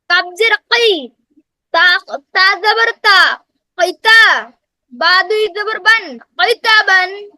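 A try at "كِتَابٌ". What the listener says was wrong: সেই কিটা নরমাল কি? এটা তো কফ না, কফের ক্ষেত্রে হবে হ্যাঁ তাই। আর যেটা কাফ, এটা নরমাল কি, কয়েকার কি।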